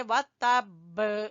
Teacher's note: یہاں پر قلقلہ کریں گے، اور ویسے بھی با مشدد ہے تو اس لیے اس کو زور دیں گے